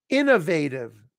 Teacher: the stresses on the first syllable